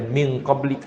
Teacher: pastikan suara kita 100% di hidung, tak ada di mulut